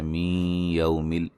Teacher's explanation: نون ساکن کا ادغام مع الغنہ ہے